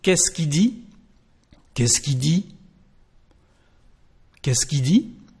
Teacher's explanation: So the first part of the question is just something like qu'est-ce, qu'est-ce, and instead of pronouncing the letter L of the subject, we just say qui